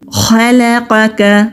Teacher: خو مستعلیہ حروف میں سے ہے, موٹا پڑھیں گے, لام باریک. قوف بھی مستعلیہ حروف میں سے ہے, موٹا پڑھیں گے, کاف باریک.